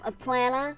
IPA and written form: ətlænə (Atlanta)